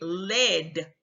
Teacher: they're doing an L where the tip of the tongue is behind the alveolar Ridge rather than is being curled towards the front of the area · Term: L for R